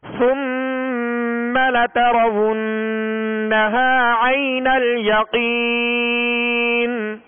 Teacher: ناک میں آواز لے جا کر ایک الف کی مقدار میں ٹھہرانا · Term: غنہ